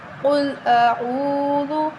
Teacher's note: قاف کو موٹا پڑھیں، حروف مستعلیہ ہے، موٹا پڑھیں گے